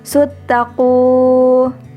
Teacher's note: Huruf mad tabi'i ini ada 3, yakni alif, waw, ya, dan cara membacanya yakni dengan dipanjangkan sebanyak 2 ketukan atau 2 harokat